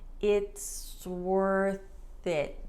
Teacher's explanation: So 3 words, actually 4, then we have the contraction, it's, and then we smush it all together and it sounds like one linked word